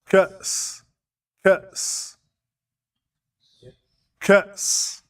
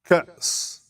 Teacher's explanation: So if you have an alif, which normally can make any one of these sounds, a, I, u, but if it has a sukoon, it makes a sound. It's what we call in English a glottal stop.